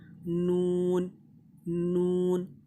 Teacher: ज़बान की नोक और ऊपर वाले दांतों के मसूड़े पे ज़बान को टच कर देना है और होठों को थोड़ा सा गोल करना है।